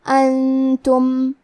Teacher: کلمت انتم میں نون ساکن ہے، پھر حرف التا ہے، تا حروف الاخفاء میں سے ہے، تو ہمیں یہ حکم کو غنہ کے ساتھ ادا کرنا ہے